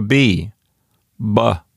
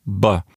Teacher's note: the letter B is really just a P, but with your vocal cords vibrating while you release the air